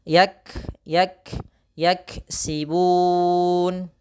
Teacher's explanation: kaf sifatnya hamas, ya, makhrajnya dari pangkal lidah kita. Pangkal lidah berarti yang paling belakang.